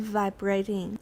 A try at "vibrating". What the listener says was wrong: Where is the stress? 第一个音节有重音，不要念 vibrating. Everybody vibrating. Vibrate. Vibrates. Vibrated. Vibrating. 可是名词 vibration. Yeah, 要记得只有名词重音在第二个音节. So vibrates, vibrating 等等.